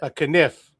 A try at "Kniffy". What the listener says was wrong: No, it's never silent. If you're pronouncing the K, you're pronouncing the E.